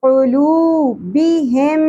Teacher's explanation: اب یہاں آپ دیکھیں میم ساکن کے بعد اگین ہمارے پاس میم مشدد آ گیا. ان دونوں میم کی ساؤنڈ کو ہم نے مرج کر دینا ہے، ملا دینا ہے، ادغام کر لینا ہے، ٹھیک ہے، اور ساتھ میں غنہ بھی کرنا ہے. سو دس رول از کالڈ ادغام مع الغنہ.